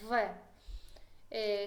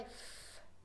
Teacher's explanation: V, que se pronuncia con dientes de arriba y el labio de abajo, V. Si lo pronuncio sin sonido, sale F. Entonces V y F es un par, sorda, sonora, porque la boca es igual, pero uno, V, se pronuncia este sonido con sonido y F, F.